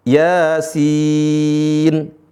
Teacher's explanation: ya-nya dibaca 2 harokat dengan kadar mad tabi'i. Adapun sin dibaca dengan kadar mad lazim, yaitu 6 harokat.